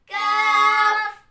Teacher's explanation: जुबान की जड़ को सख्त तालू से लगाकर अदा होता है